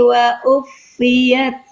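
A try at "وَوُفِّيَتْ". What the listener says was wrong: Ini wawuf, bukan wauf. Masa wauf? Wawufiyat. Wawu.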